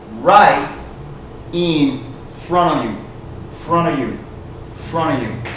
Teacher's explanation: the strong n Sound when you say it fast is going to take away the T sound and this off is going to sound like an ah right